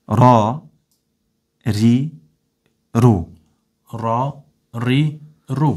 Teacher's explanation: Po e vreni se rajën kur po e shqiptoj me fetha apo me damme, është pak ma e rond.